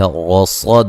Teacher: را کو موٹا ادا کریں گے، صاد کو موٹا ادا کریں گے.